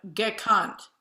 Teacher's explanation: the color of the vowels either before or after make that schwa more open